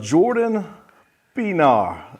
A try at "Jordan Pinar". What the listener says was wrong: You got to roll the R a little bit.